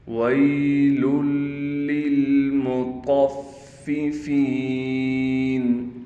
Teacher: فا پر تشدید ہونے کی وجہ سے تھوڑا ٹھہراؤ کیا جائے گا۔ دونوں فا کو بالکل صاف کر کے ادا کریں گے۔